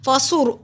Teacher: فصور صاد موٹا حروف ہے، را کو موٹا پڑھیں گے، را سے پہلے پیش ہے